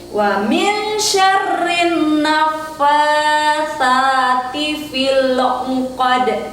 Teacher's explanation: di qadnya yang terakhir itu kembali hukum bacaan qalqalah. Jadi dipantulkan.